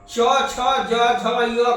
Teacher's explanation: च छ ज झ य का उच्चारण तालू से